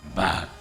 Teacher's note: FNAF 6 Afton also sounds comparatively more feeble, particularly in his annunciation of back >> back. The ah sound is breathy, as though he didn't have the strength to fully project his voice.